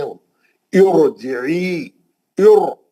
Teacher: عارضی زیر را کو پتلا نہیں کر سکتی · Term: را موٹی